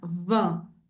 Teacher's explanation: Tantas pessoas vão te falar que esses sons são iguais, mas não são, porque o I com N da palavra vinho, que é vin, a gente vai falar esse sonzinho aberto